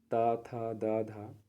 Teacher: दंत जिसमें जीभ जो है दांतों को स्पर्श करे